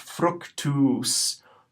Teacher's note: Long U with that macron is always going to be pronounced oo, like the sound in suit or loot. Short U is going to be pronounced like the sound in put or soot.